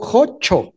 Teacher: El hablante lo resolvió y dijo jocho, es decir, palatalizó y pues dejó en un fonema que además es coloquial y gracioso, ¿no?